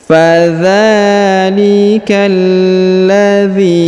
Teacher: langsung sambung masuk ke huruf lam yang berharakat tasdid ya fadzalikalladzi huruf zzi dipanjangkan dua harakat karena di depannya terdapat Ya Sukun